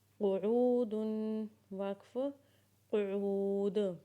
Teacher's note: قاف پیش قو، عین واو قو، قعو، دال دو پیش دن، قعود، وقف قعود۔ قاف کی آواز کو موٹا کر کے نکالیں گے